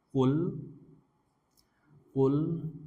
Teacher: lamnya ini lam sukun mahrajnya masih ingat ya ujung lidah